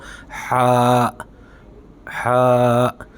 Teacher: یہ زبان کے حلق کے نیچے والے حصے سے ادا ہوگا، ہلکا سا پیالہ بنے گا زبان کا نیچے کی طرف۔